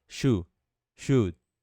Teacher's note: É apenas should, should, should. E esse D pode até quase não ser pronunciado.